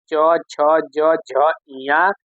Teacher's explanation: च वर्ग जिसे तालव्य कहते हैं।